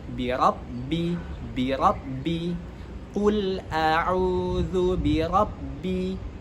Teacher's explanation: Kemudian ra itu memiliki sifat tafkhim.